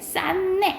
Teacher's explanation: 디귿과 니은이 만나면 무슨 현상이 일어나냐면 비음의 현상이 일어나. 그래서 결과적으로 쌌네 이렇게 되는 거야.